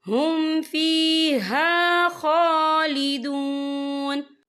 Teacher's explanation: خا کے پر کھڑی حرکات ہے، تو ہم اسے 2 یا 3 حرکت کے برابر کھینچ کے پڑھیں گے۔